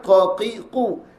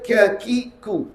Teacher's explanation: Qaf pangkal, kaf ke depan. Ke depan maksudnya pangkal lidah ke belakang, dia ni ke depan sedikit.